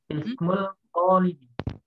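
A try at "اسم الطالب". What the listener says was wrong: Ismut talibi. Jangan ismul bacanya ismut. Karena itu alif lam syamsiah. Maka lamnya tidak terbaca. Langsung kita masukkan ke dalam po. Ismut talibi.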